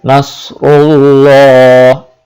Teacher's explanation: রায়ের উপর যখন পেশ আসবে তখন রাকে পৌর করে পড়তে হবে।